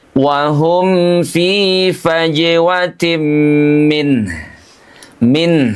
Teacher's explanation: huruf nunnya dibaca dengan suara mengalir tipis karena dia punya sifat tawasud